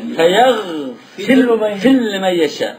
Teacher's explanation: Ra harfini lam harfiga. Ra'ni lamga idgham qilibdi.